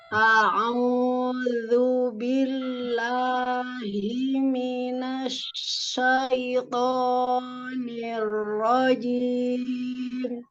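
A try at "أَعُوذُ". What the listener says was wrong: A-nya tidak terlalu dalam, Umi. Rilekan, keluarkan ya.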